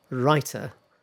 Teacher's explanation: what happens is that T in writer is voiced, sort of like voiced. Um it sounds a bit like rider.